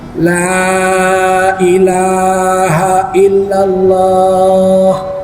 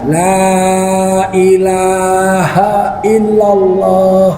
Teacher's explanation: Kalimat la ilaha illallah itu diucapkan tidak perlu menggerakkan bibir.